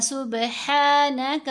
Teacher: با پر قلقلہ کریں گے، با ساکن ہے، حروف قلقلہ میں شامل ہے